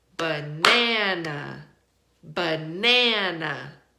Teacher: The first syllable and the last syllable are not stressed, meaning we don't put our emphasis on those syllables, right? But we do put our emphasis or our stress on the second syllable, right?